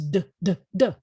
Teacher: your mouth is doing the same thing, but you now have your vocal cords engaged when you're doing it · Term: voiced version